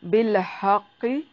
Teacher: قاف کو موٹا ادا کریں گے، ہا کو واضح نکالنا ہے